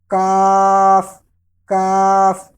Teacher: یہ زبان کی جڑ اور تالو کے سخت حصے سے ادا ہوگا